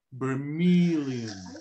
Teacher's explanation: the stress is in meal so that's the the the syllable you have to stretch more to sound more american